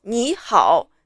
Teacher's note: when a word is made of two third-tone syllables, the first character has to turn into the second tone. Like 你 is the third tone, and then 好 is the third tone.